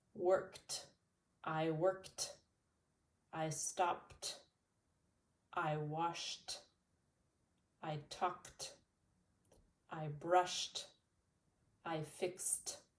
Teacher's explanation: These have no voice, so they sound like t, t when you add the ED.